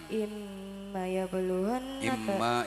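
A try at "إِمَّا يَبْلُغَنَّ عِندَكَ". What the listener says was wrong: Imma panjang. Nah, itu ndak ada kanya.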